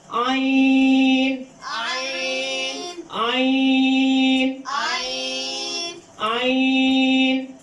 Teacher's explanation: تو یہ حرف کہاں سے گیا؟ حلق کے درمیان سے، وسط حلق سے۔ عین عین عین عین عین، عین اس کا حرف کو ادا کرنے کا طریقہ ہے یہ ہے کہ آپ نے زبان حلق منہ کھولنا ہے اور زبان کو پیچھے حلق دھکیلنا ہے۔